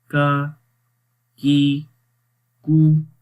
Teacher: تو جب زبان کی جڑ تالو کے سخت حصے پہ لگے گی اس وقت یہ باریک کاف ادا ہوگا